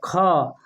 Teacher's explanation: अल्प प्राण की अपेक्षा जो है अधिक हवा बाहर निकलता है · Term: महाप्राण